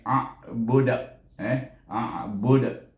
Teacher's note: Kita bunyi a daripada pangkal halkum kepada tengah halkum a. Budu, bila kita mati dal jadi huruf qalqalah, jadi qalqalah kubra, bunyi a budak, a budak.